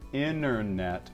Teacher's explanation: the American tendency to drop t- sounds after the n Sound in a word